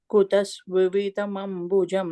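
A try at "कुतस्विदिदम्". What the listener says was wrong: No, you're saying Svididam, you're saying V. Swididam.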